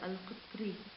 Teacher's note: كلمة القطر مترقق وصلا بسبب الكسر، لأنها الراء مكسورة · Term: الترقيق